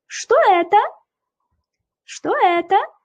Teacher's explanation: Oxiriga urg'u beryapmiz, savol bo'lgani uchun. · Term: so'roq ohangini